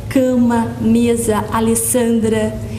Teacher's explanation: São palavras fortes, tônicas, na penúltima sílaba. E elas não são acentuadas. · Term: paroxítonas